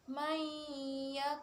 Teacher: Ada panjangnya. Jadi untuk panjang bacaan idgham biguna itu 1,5 alif atau 3 harokat.